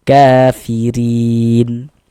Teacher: Maka huruf ron-nya dibaca tarkik, dibaca tipis sehingga pangkal lisan kita tidak naik terangkat ke atas